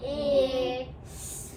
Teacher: this is going to be a voiced TH sound